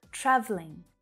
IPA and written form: 'trævliŋ (Travelling)